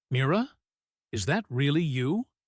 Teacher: Listen to how much weight falls on the word really there.